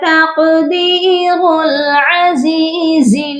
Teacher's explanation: را کو ہم ڈائریکٹ لام کے ساتھ ملائیں گے اور اس کو ہم موٹا بھی کریں گے